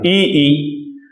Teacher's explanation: ई अगर आप बोलेंगे तो आप देख रहे हैं कि आपकी जीभ पीछे की तरफ जस्ट तालु के नीचे सिमट जा रही है, ई, तो इसलिए इन्हें कहते हैं तालव्य।